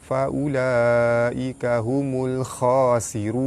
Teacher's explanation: Pada atas bertemu alif, mad asli panjang 2 harakat. Ra berbaris hadapan, ra dibaca tebal. Pada depan bertemu waw, mad asli bertemu huruf yang dimatikan kerana waqaf, hukum dia mad arid li sukun, dibaca panjang 6 atau 4 atau 2 harakat. · Huruf mad bertemu hamzah dalam satu kalimah, hukum dia mad wajib mutasil, dibaca panjang 5 harakat. · Alif lam bertemu kha, alif lam qamariyah, lam dibaca jelas.